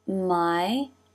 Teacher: Now from the angle, my, I as in by diphthong, jaw drops for the first part, and then the middle front part of the tongue moves up for the second part